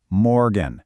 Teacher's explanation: Pay attention to that R sound. It's kind of in the back of your throat.